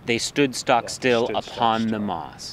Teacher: We get all these emphasized syllables. There's spondees in there. I think there's a lot of beat where both syllables are emphasized, and there's stood stock still.